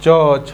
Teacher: च को कहीं ना कहीं तालु से बोलते हैं